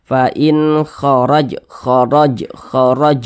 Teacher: fathah atau harakat fathah huruf ro memiliki tanda baca fathah maka dia dibaca tebal dibaca takhim sehingga ketika Kita mengucapkannya itu pangkalisan kita itu naik terangkat ke atas